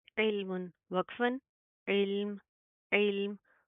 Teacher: आगे ऐन लाम से इल्म मीम दो पेशमुन, इल्मुन वक्फन, इल्म, इल्म। वक्फ की सूरत में क्या है, मीम के ऊपर जज्म आएगी, ये दो पेश हट जाएंगे